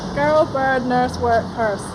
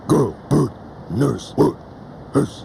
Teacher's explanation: Although the rolling R isn't widespread outside of Southland, it's doing very nicely here. · In earlier times, Southlanders would roll just about any old R. Now it's mostly only on words that rhyme with nurse.